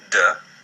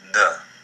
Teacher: When it has the dagesh, it sounds like the d we're accustomed to (d). And without the dagesh, it sounds like a softened d (dh)